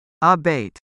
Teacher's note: Pronounce abate with the stress on the second syllable, abate. Example 1.